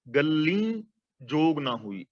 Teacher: ਇੱਥੇ ਗੱਗੇ ਤੇ ਅੱਧਕ ਵੀ ਲਗਾਵਾਂਗੇ, ਔਰ ਲੱਲੇ ਦੀ ਬਿਹਾਰੀ ਦਾ ਉਚਾਰਨ ਨਾਸਕੀ ਹੋਏਗਾ, ਬਿੰਦੀ ਸਹਿਤ ਗੱਲੀ, ਤੇ ਅਰਥ ਹੋ ਜਾਏਗਾ ਗੱਲਾਂ ਨਾਲ।